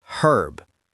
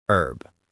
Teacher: In British English, the H is pronounced herb. But in American English, it's silent, herb.